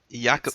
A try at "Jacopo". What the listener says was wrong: It's basically like Jacob in English. Jacopo with the P at the end. P, like